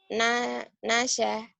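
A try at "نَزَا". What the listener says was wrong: Naza. Bukan nasa. Naza. Naza.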